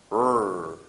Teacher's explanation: It's very close to the lateral sound, but the key differentiation here is that our tongue is not touching our alveolar ridge. It's approximately in the middle of our mouth. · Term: R sound